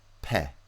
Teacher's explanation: So the pronunciation pe, right, jumps in sonority from a p, which is very quiet and low in energy, to pe. And the is a nasal, so it has more sonority than the stop, but less sonority than the p.